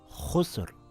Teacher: here it reads as khusr with a heavy Ra